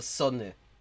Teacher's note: Yeah, and you can also still hear that, you know, it is Austrian High German, because in like German High German, that would be Sonne, but in Austrian they tend to just make it a S sound, an unvoiced